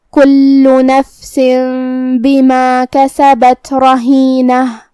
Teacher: کلمت رہینہ جو کہ را پہ زبر ہے، تو ہم حرف الرا کو موٹی آواز میں پڑھیں گے. آخر میں تا مدورہ ہے، ہم یہ حرف پہ روکیں گے تو ہا سے روکیں گے